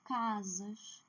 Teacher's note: a sílaba tônica aqui é a penúltima